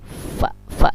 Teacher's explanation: kalau fa ini makhrijul hurufnya perut bibir bawah dengan gigi muka yang di atas. Fa. Dan dia al-hamas juga mengeluarkan udara atau nafas.